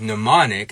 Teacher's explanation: mnemonic, as in mnemonic devices, where we drop that M sound